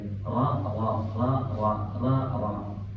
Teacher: roh ini ada sifatnya, roh tafkhim dia. Jadi di pangkal lidahnya harus naik dikit